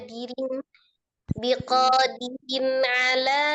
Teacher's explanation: Dirin kan dinya kan pendek, kasroh dal kasroh dirin.